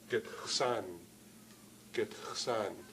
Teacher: But there are many people in the East who, rather than have a K sound there, rather than use a stop, they pronounce it with a fricative.